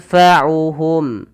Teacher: nunnya samarkan ke fa langsung